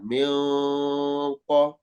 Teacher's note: Ada yang dengung mimi, sempurnakan dengungnya. Kemudian ikhfa-nya min qab disertai dengung dan ditebalkan.